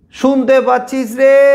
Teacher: দীর্ঘায়িত করে টেনে টেনে উচ্চারণ করি যে স্বরধ্বনিটাকে। আচ্ছা, অনেক সময় আমরা যখন কাউকে দূর থেকে ডাকি তখন শব্দের শেষে একটা স্বরধ্বনিকে ধরে অনেকক্ষণ ধরে টানি, যাতে ওই শব্দের রেশটা ওর কানে পৌঁছতে পারে।